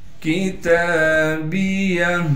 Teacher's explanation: کاف کو باریک کر کے پڑھیں گے، تا پر کڑا زبر ہونے کی وجہ سے تا کو ایک الف کی مقدار کھینچیں گے